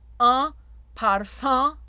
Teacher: Bright parfum. OE nasal, jaw drops.